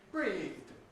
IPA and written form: briːðd (breathed)